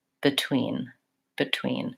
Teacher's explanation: she goes very quickly on the bit and the tween is longer and has the clear vowel